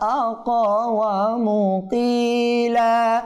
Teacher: কফ কলকলা হরফ প্রতিধ্বনি করতে হবে, কম্পন সৃষ্টি করতে হবে। আকওয়ামু বললে হবে না, আকওয়ামু কইলা।